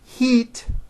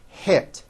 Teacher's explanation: When it should have an I, it's pronounced as an E. Think of the sound E as in heat as being high up, and I as in hit as being a little bit lower. One hint I could give you is when you're practicing, raise your eyebrows with E words like this, heat, and then lower your eyebrows and don't smile so much with I words like hit.